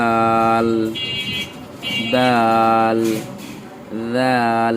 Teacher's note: দাল জিব্বার আগা থেকে পাতলা হবে